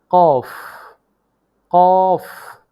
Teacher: জিহ্বার গোড়া তার বরাবর উপরের তালুর সঙ্গে লাগিয়ে উচ্চারিত হয়